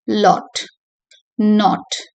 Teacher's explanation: the tongue is placed low and towards the back of the mouth so with the lips rounded